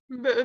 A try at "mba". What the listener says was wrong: Non, c'est pas mbe, c'est mba, mba.